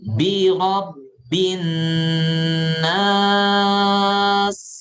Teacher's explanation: Ya, dia juga punya sifat hamas. Punya sifat rokhawah yang memanjang suara. Nas itu memanjang.